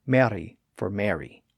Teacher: when making an R sound they just briefly tap that Ridge with their tongue · R this sound is similar to the trilled r but in instead of an extended vibration the tongue just briefly touches the ridge behind the upper teeth one time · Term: tapped or flapped R